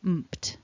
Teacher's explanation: So the end of this verb, basically, and then the ed, because the P is not voiced, the ed is also not voiced. So the ending of the past tense and past participle is mped.